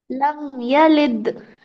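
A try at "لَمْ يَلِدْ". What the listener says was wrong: शाबाश, बहुत अच्छे।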